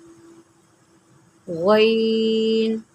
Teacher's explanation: غین جو ہے یہ بھی حروف مستعلیہ میں سے ہے، اس کو بھی آپ نے موٹا کر کے پڑھنا ہے